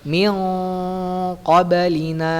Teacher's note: Harus ditebelin ya karena dia huruf qaf letaknya di pangkal lidah paling belakang